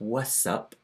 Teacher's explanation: So we don't get the T in what's anymore, it's just what's up.